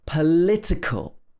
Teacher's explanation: Political, the adjective, is stressed on the li.